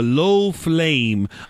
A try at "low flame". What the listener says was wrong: Why are you pronouncing your L's like that suddenly? Low flame.